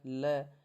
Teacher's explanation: जो ल है वो कंठ से उच्चारित नहीं होकर के दंत से उच्चारित होता है